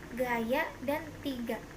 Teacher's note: Konsonan G, kriterianya bunyi dorsovelar hambat bersuara